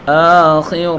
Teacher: خا کو پر پڑھیں گے اور را کو بھی پر پڑھیں گے